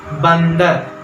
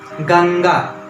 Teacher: अनुस्वार, क्योंकि इसकी आवाज नाक से आती है